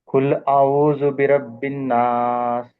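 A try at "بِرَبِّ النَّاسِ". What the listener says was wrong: నూనె మీద కొంచెం మంచిగా చేయండి. బిరబ్బిన్ నాస్. ఉన్నా అంటే ఎక్కువసేపు పట్టుకోవాలి దాన్ని, శబ్దాన్ని.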